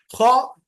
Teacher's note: ख में आपको थोड़ा खरखरा हट की आवाज लाना है रस्टी साउंड थोड़ा आवाज घिसना वहा हल के पास जैसा उर्दू में हम